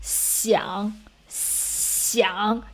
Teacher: you can feel the air flow comes out through your bottom teeth. That means the tip of the tongue is low enough. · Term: XI